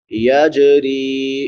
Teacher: یجری، جیم پہ قلقلہ ہوگا اور را کو باریک پڑھیں گے کیونکہ را کے نیچے زیر ہے، را کے بعد یا مدہ ہے، الف برابر لمبا۔